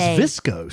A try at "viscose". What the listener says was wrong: I know, but they said it's viscose.